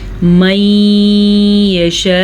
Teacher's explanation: ہم دونوں حروف کو آپس میں ملانے کے ساتھ ساتھ غنہ بھی ادا کریں گے. ٹھیک ہے، اور اس مد کی مقدار تقریباً 5 حرکات عربیہ ہے، یعنی کہ 4 سے 5 سیکنڈ تک ہم مد کو لمبی کریں گے. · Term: بڑی مد